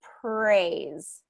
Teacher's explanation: sound is done it's just that the american r tends to the tongue comes down and it's more of a smooth r